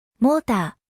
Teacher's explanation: モ ー タ Motor is a great example once again, illustrating the vowel plus R pattern, which frequently transforms into a choon, or long vowel sound in Japanese